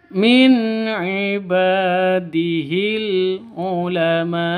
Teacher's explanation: nun mati bertemu dengan ain, jelas, terang, tidak boleh dengung, ya, tidak boleh disentak. Min ibadihil itu salah.